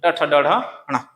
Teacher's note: मुर्धन्य व्यंजन तो जब बोलते हैं तो जीभ जो मुड़ जाता है